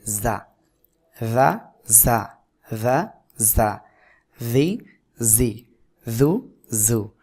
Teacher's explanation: জিহ্বার আগা সামনে নিচের দুই দাঁতের পেটের সাথে পেট ও আগার সাথে লাগিয়ে উচ্চারণ করতে হবে